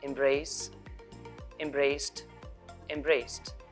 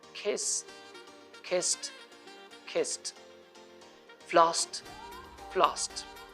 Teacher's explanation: If a word ends with s sound like embrace, embraced, embraced, one e is dropped here, then the ed ending is pronounced t.